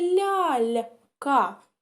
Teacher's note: у нас є лль м'яка далі друга ль м'яка і ка тверда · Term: м'які приголосні